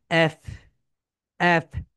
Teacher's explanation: যখন তোমরা এফ উচ্চারণ করবে তখন তোমাদের উপরের দাঁত নিচের ঠোঁটের সঙ্গে হালকা টাচ করবে